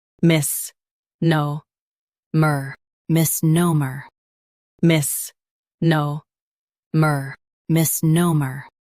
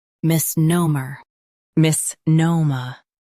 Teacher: Stress no and keep mer soft.